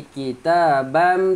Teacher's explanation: tanwin bertemu mim, masukkan tanwin ke dalam mim, dengung